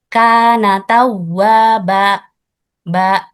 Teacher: menambahkan huruf hamzah dengan menutup pita suara